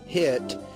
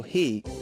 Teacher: both sounds are made with the front of the mouth Less open because the tongue body is raised with both sounds the body of the tongue is pushed forward